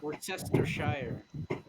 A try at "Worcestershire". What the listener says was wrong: That's just not how the word is pronounced. It's Worcester. You do have to literally ignore the Shire part. yes, it's Worcester sauce.